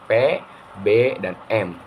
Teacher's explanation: bunyi bilabial adalah bunyi yang dihasilkannya dengan cara mempertemukan antara bibir atas dan bibir bawah